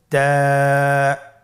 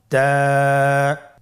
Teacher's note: তায়ের মাখরাজ কোন জায়গা থেকে? জিহ্বার আগা সামনের উপরের 2 দাঁতের গোড়ার সঙ্গে লাগিয়ে উচ্চারিত হয়।